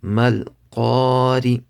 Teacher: Ra has a zer, so it's empty mouth.